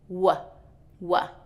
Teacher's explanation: W is with the mouth rounded, no contact with the teeth